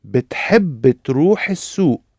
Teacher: Did you notice the helping vowel because بتحب finishes with b, and تروح begins with t. So inserted a little helping vowel in between the three b, t, between the three consonant sounds.